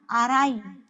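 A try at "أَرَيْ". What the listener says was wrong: Aroy, bunyi O semua.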